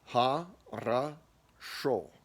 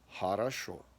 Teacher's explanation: So, if it's not stressed, it sounds like ah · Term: vowel reduction